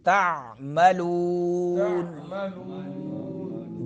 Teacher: لون میں خیال کرنا ہے کہ ناک میں آواز نہ جائے، لون منہ سے نکلے